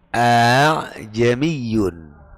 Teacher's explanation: punya Alif punya Hamzah cuma karena ditasil sehingga lebih mendekati kayak ha